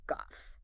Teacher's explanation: in American English, it's a front flatter almost nasal vowel